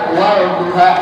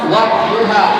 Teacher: Sehingga alif lam yang hukumnya alif lam syamsiyah, contohnya ad-duha itu lamnya ada tapi nggak bisa dibaca. Wadduha nggak ada dibaca, walduha nggak ada.